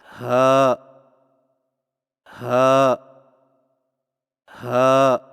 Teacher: ہا کی ادائیگی میں زبان کی جڑ کو حلق کی طرف دبائے بغیر باریک اور بغیر رگڑ کھاتی سانس میں پڑھیں، یعنی ہا ہا ہا۔